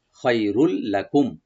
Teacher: তানবিনের পরে যে লাম আসছে, এখানে আমরা এদগাম করব, সংযোগ করব, কিন্তু গুন্না ছাড়া, মানে উইদাউট গুন্না।